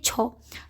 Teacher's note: छ को बोलने में ज़्यादा हवा हमारे मुंह से निकल रही है, तो छ इसमें करेक्ट आंसर हो जाएगा, ठीक है। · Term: महाप्राण ध्वनि